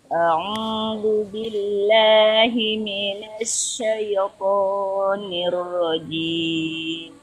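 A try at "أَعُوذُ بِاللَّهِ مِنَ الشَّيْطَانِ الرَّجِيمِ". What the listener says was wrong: itu huruf sya itu bukan sh bukan, tapi lidah bagian tengah naikkan lagi.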